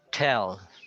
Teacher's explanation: to do the aspirated T, you have to blow a short gust of air as you pronounce the sound, even if it is preceded by an S.